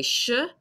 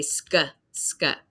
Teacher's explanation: And on the other side, they also do not pronounce like the spelling, but many British English speakers will say schedule, sh. So they say sh, I say sk, sk.